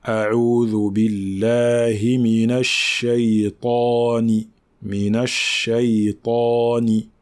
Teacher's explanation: la lettre ta fait partie des lettres emphatiques, des lettres qui sont graves, qui ont une intensité forte au niveau du son. Donc ici, lorsque on ne prononce pas bien le ta, c'est-à-dire que lorsqu'on ne l'emphatise pas bien, eh bien cela va ressembler à un ta.